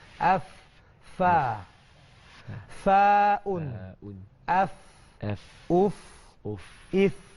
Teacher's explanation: Kita punya fa ni, kita punya gigi atas ni bertemu dengan bibir bawah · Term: huruf fa